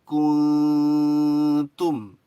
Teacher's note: Jadi nunnya nggak boleh jelas nun, meskipun ketemu huruf ta. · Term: ikhfa